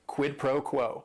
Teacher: the stress is kind of on that first word and that last word.